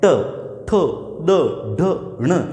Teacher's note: तो इनका उच्चारण करते समय जीवा जो है वो कहां पर टकराती है मुर्दा पर टकराती है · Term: मूर्धा, ट वर्ग